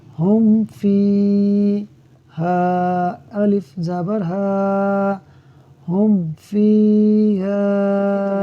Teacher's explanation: میم ساکن میں اظہار شفوی ہوگا، یعنی ہم غنہ نہیں کریں گے۔